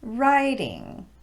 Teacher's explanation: Normally, the word writing would be emphasized on the first syllable, and that first syllable would have a higher pitch. Writing. However, because it's now the second word in a compound noun, we're going to de-emphasize both syllables in that word.